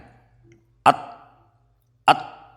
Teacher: Huruf ta, dal dan to diucapkan dari ujung lidah bertemu, ujung lidah paling ujung ya, bertemu dua pangkal gigi seri atas atau dua gigi ya, dua gigi seri atas. Ketika mengucapkan huruf to, ini pangkal lidah dinaikkan, artinya ada sifat isti'la ya.